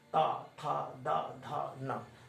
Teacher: जीभ जो है दांत के बीच में आ जाती है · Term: दंत वाली ध्वनि